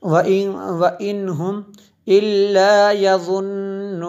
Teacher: نون میں شدد ہے اس لیے یہاں پہ غنہ کیا